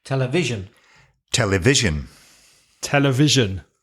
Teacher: we all agree that television has the stress on the second syllable from the end